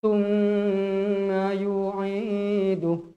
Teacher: Tengok dekat huruf mim ada tanda sabdu, bermaksud dua harokat. Wajib gunnah. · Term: wajibul gunnah